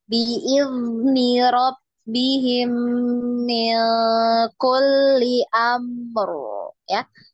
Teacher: Biizni ya, dialirkan zal ya, jangan dipantul ya.